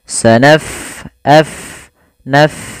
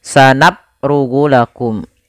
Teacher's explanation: Pada lafal bacaan sanafrugu, fa-nya kita alirkan nafasnya